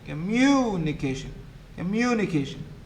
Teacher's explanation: two stresses a primary one and the secondary one so in in communication the loudest syllable is mu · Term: stress syllable